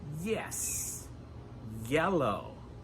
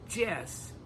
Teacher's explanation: Remember that the "y" sound in English starts with "eee" (iii), so "yes" "yellow" The tongue never touches the roof of our mouth.